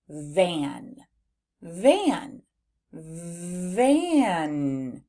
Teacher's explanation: I hear the three sounds the V the nasalized A and the N